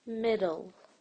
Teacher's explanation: do you feel that there is a short e between the D and the L